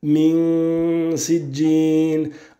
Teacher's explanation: la ghunna qui ne sera pas emphasée, elle ne sera pas mufakhama, mais elle sera donc muraqqaqa, prononcée de manière non emphasée. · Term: al-ikhfa